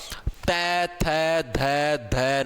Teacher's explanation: बोल के देखो दंत, दंत का मतलब दांत, ते थे धे धे न, आपकी जीभ यहां पर आगे दांतों के टच होगी